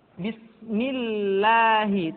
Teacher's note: huruf yang berharakat kasrah maka lam kembali dibaca dengan tipis tarkik